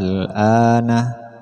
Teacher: Hamzahnya di sini dibaca panjang 3 alif. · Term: mad far'i